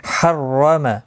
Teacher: रो ज़बर की वजह से पुर पढ़ा जाएगा